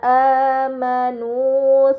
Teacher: Kemudian pada kata amanu terdapat harokat dhammah bertemu waw sukun, ini dinamakan mad tabi'i, maka harus dibaca panjang selama 2 harokat